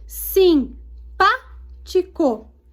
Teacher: é a sílaba tônica mais forte é a antepenúltima